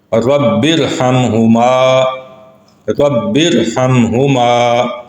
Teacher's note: پہلا لفظ ہے رب، با کے نیچے زیر ہے اور آگے را ساکن ہے جو دوسرے الگ لفظ کا حصہ ہے، تو یہاں پہ اس را کو بھی ہم پر کر کے ادا کریں گے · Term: را پر پڑھنے